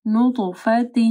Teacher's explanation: من نطفۃ، نون ساکن کے بعد نون ہے، یہاں پہ ادغام آ رہا ہے، ٹھیک ہے، غنہ کے ساتھ. پھر طوا کے اوپر جو ہے کلکلہ ہوگا اور طوا موٹی پڑی جائے گی